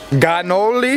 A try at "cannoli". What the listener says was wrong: No, con la C. Cannoli.